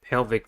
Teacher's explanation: Pelvic has 2 syllables and the stress is at the first one. The first syllable is pel, a.